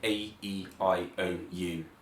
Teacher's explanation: all of the vowels are nasalized so slightly up here in the nose like sounding tiny bit like you've got a cold yeah similarly